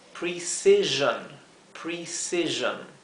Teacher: Aquí hay dos sonidos de S, porque la letra C se pronuncia como la S suave, s, y acá la S que se encuentra entre dos vocales, o sea, entre dos I, se pronuncia como la S zumbada, z